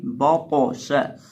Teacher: دیکھیں تو جو ہے ہمارے پاس یہ ساکن ہے، اور میں نے آپ کے سامنے ذکر کیا تھا پچھلے سبق میں، پچھلی گزشتہ ویڈیو میں، کہ جو 5 حروف قاف تا با جیم دال ہے یہ جب ساکن ہو تو ان کو ہلایا جاتا ہے۔ تو قا بھی حروف قلقلہ میں سے ہے، اس کو ہلائیں گے با قو شا، اور دوسرا اس کو موٹا پڑھیں گے کیونکہ یہ حروف مستعلیہ میں سے ہے۔